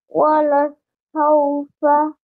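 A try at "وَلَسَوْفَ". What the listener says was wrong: Yeah, wala. Okay, wala saufa. Don't break the word in two. Don't pause after wala.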